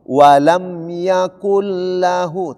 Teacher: Hukumnya idgham bila gunna. Nun mati tersebut berubah bunyinya menjadi huruf yang didatangi, yaitu huruf lam.